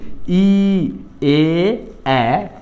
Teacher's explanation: ই হলো উচ্চ, এ হলো উচ্চ মধ্য, আর এ এটা হলো নিম্ন মধ্য।